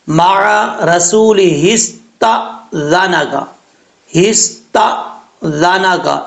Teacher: یہ لفظ بھی آپ ٹھیک کر لیجئے گا، کیونکہ تا کے اوپر، تا کے آگے الف ہے، حمزہ ہے، حمزہ کے اوپر جزم ہے، اور جب حمزہ ساکن ہو یعنی اس کے اوپر جزم ہو تو ساکن ہوتا ہے، جب حمزہ ساکن ہو تو جھٹکے سے پڑھا جاتا ہے۔ تو یہاں پر اکثر لوگ جھٹکا تو دیتے ہیں لیکن جھٹکا دیتے ہوئے قلقلہ بھی کر جاتے ہیں، قلقلہ نہیں کرنا۔